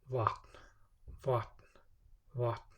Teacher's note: The T is pronounced right on the very tip of the tongue. And the V is somewhere between the English V and W.